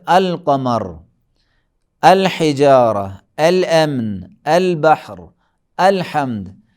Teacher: حمزہ بھی پڑھا جائے گا اور لام بھی پڑھا جائے گا، صرف درمیان میں پڑھنے کی صورت میں لام نہیں پڑھا جائے گا۔ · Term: حروف قمری